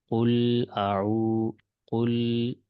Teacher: اس میں لام حروف متوسط ہے، اس کو آواز کو تھوڑا جاری رکھیں گے